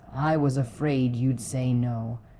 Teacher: The stress naturally lands on afraid and no